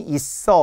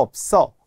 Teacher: 있어는 짧고요 없어는 길어요 원래 업은 긴 소리이기 때문에 그렇습니다 예외로 또 긴 소리가 나죠